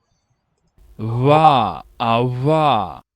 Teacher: One thing you might hear there is a labiodental approximant.